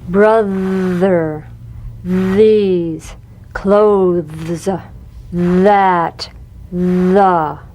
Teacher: The voiced tongue point to teeth fricative TH. The vibrant sound of the voiced TH has a quality much like that of the V.